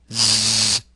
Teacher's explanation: Z place your index in your middle finger on your throat you should feel vibration of the vocal folds when you produce this sound · The Z is an alveolar fricative consonant. Make this sound with vibration of the vocal folds. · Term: z sound, Z sound